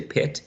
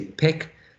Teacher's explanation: when we say pet, and we focus on the vowel sound, the tongue is probably closer to the front part of the mouth.